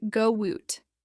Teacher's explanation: vowel sound and the next word begins with a vowel sound we often insert a slight W or Y sound to link them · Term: vowel to vowel linking